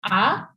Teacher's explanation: The L on the end is silent, and the T has a special sound where you put your tongue on the roof of your mouth, and you let the air escape from the side of your face